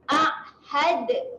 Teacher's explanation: Jangan pergi dekat lelangit Kalau pergi lelangit itu bukan makhraj huruf dal. Makhraj huruf dal di belakang gigi atas.